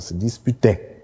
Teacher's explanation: das ist der Akzent nur auf der letzten Silbe dieser ganzen Wortgruppe